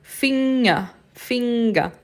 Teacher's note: Porque o G depois do N, ele fica quase imperceptível, né? A gente movimenta a língua quase como se a gente fosse falar, mas antes da gente falar, a gente para.